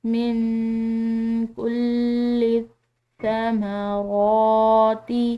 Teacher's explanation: جو میم پر پڑی زبر ہے اس کو ہم نے کھنچاؤ نہیں دینا، لمبا ادا نہیں کرنا ، اور را کی کھڑی زبر کو ہم نے کھنچاؤ دینا · کو ہم نے کھنچاؤ نہیں دینا، لمبا ادا نہیں کرنا، اور را کی کھڑی زبر کو ہم نے کھنچاؤ دینا ہے، لمبا ادا کرنا ہے ایک الف کے برابر